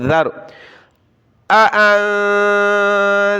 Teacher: یہ ذال ہے، ذال زبان نکالے